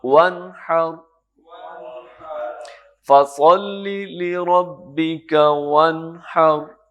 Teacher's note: ناک میں نون کی ادائیگی کے وقت تو جاتی ہے لیکن اس کو ٹھہرانا نہیں, ڈیلے نہیں کرنا, ساتھ ہی اگلا حرف ادا کر دینا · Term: اظہار